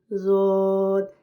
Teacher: ज़ुबान की साइड, ज़ाहिर बात है जो साइड है ये दाढ़ों की तरफ ही है, वो खुद ही लग जाएगी। ज़ुबान की साइड ऊपर की दाढ़ों से लगेगी, ज़ौद, मतलब आपकी ज़ुबान थोड़ी सी दाढ़ों वाली साइड पे उसकी साइड लग जाएगी, तो इंशाअल्लाह ताला ये बेहतरीन मखरज निकल आएगा।